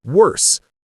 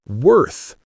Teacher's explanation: The correct way, with your tongue between your teeth, sounds like worth.